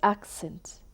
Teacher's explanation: In the noun accent itself, the stress falls on the first syllable.